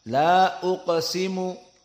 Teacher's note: La uqsimu, mad jaiz hanya dibaca 2 harokat.